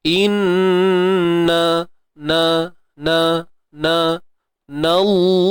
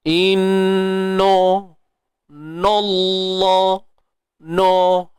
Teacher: Ingat yang tebal pada lam sahaja, pada nun jangan duk tebal kan.